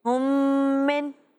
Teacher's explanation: میم ساکن کے بعد دوسری میم آئے، ادغام میں شفوی ہوگا، میم کو میم سے ملانا بھی ہے اور غنہ بھی کرنا ہے۔